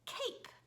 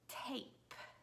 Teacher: they would substitute the K sound for a T sound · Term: fronting